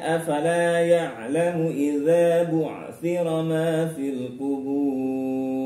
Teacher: la fathah diikuti alif panjang 2 harokat, contoh dari mad tabi'i.